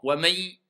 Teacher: Donc vous passez directement wamay, donc il disparaît carrément le nun